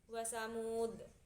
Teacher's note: Ada juga qalqalah kubro yang dalnya itu dibaca secara dipantulkan